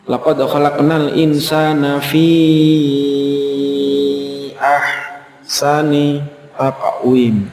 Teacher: fi-nya itu lebih panjang daripada sekedar mad tabi'i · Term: mad jaiz munfasil